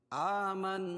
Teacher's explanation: آ کھڑا زبر قائم مقام الف مدہ کے اس کو ایک الف کے برابر کھینچ کے پڑھیں گے۔ آمنا، نون مشدد پر غنہ ہوگا، اور الف سے پہلے زبر ہے نون پر اس لیے الف مدہ ہوگا۔